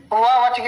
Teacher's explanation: तो इसको लिखना है दंतोष्ठ। दंत और ओष्ठ के मिलने से इसका उच्चारण होता है वह का